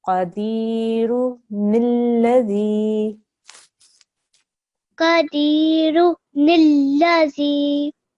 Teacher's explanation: we need to make sure we don't join the ra to the noon.